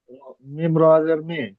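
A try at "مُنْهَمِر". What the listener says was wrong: মিম রজের মির। হ্যাঁ, রটা উচ্চারণ করতে হবে, মির, মুন হামির। এখানে র সাকিনের আগে জের এসেছে, কি হবে তাহলে?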